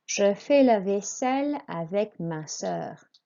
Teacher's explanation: Vaisselle is as it looks, a long S sound with a double S, and the L's are pronounced.